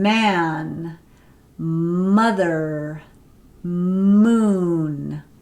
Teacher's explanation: Okay, so that's why it's called a stop. Okay, so you're stopping the air with your two lips in the bilabial nasal stop, but you're allowing the air to come out through your nasal cavity. So as in man, mother, moon, two lips together.